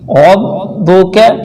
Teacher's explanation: یہاں پر بھی را کو موٹا کریں اور یہ کاف باریک ہے